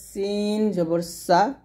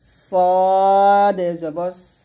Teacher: এখানে সিন এবং সদের মধ্যে যে পার্থক্যটা এটা একটু খেয়াল করুন সিনটা হবে পাতলা আর সদ হবে মোটা এটা হবে সিন জবর সা আর এটা হবে হবে সদ জবর